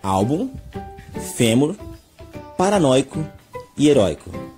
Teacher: quando nós pronunciamos nós damos mais ênfase, nós colocamos mais intensidade na penúltima sílaba